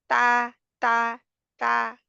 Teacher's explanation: tip of your tongue touches the gum of your two upper teeth